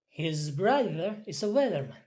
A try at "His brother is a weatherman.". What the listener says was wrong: Yes. Next.